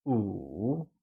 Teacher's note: 5 translates to 五 and is said with a falling, rising tone